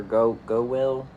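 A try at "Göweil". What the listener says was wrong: Go Ville. Yeah, it's like it's got a V sound to it. According to all the Germans that work at Giants.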